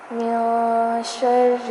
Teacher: نون ساکن پر اخفا کیا جائے گا، یعنی نون کی آواز کو ناک میں چھپا دیں گے